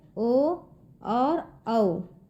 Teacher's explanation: इनके इस्तेमाल में कंठ या गले के साथ साथ होठों का भी इस्तेमाल होता है, जैसे कि स्वर में देखिए यहाँ पे ओ और औ। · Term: कंठोष्ठ